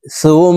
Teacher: তাসদিদওয়ালা মিমের সাথে 3 সেকেন্ড পরিমাণ নাকের বাসি থেকে গুন্না করে ধরে রাখবো। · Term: ওয়াজিব গুন্না